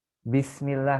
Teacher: Bismillah kasroh bertemu lafaz Allah, dia tipis, ya kan? Nah, dia tarkik.